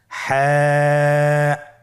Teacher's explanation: হা হরফটি উচ্চারিত হবে কণ্ঠনালীর মধ্যখান হতে। গলা চিপে ধরে আপনি উচ্চারণ করুন।